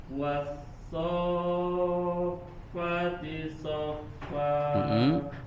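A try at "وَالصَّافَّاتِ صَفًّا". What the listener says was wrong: Fa-nya panjang ya.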